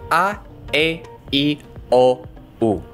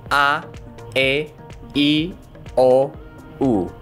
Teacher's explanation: Notice as you go through that order, your mouth starts from big and goes to small. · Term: vowels